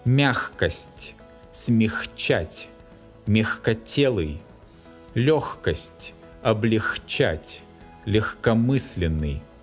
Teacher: before the hard «к» and before «ч», the letter «г» always specifies a hard sound «х».